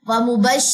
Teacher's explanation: شین میں تفشی کی صفت ہے